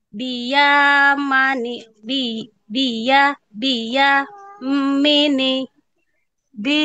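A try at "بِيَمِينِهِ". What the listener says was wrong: Minya panjang. Biyami.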